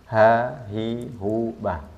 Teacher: Kalau ha itu di tenggorokan yang tengah bukan tenggorokan yang bawah